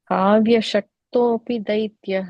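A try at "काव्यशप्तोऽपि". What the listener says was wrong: No, I think, you are saying ik. It is ip pa. Kavya Shaptopi Daityah.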